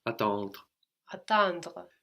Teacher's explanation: So the E is not really pronounced, although it is in some accents and dialects, but generally you just get as far as the R. The E is just showing us to pronounce the R.